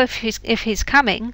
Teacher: if he's coming the h disappears